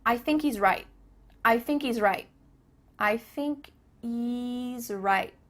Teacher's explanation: there's no h happening here